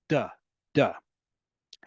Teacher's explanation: Your tongue, more specifically, the tip of your tongue is flattened and it hits just behind your front teeth.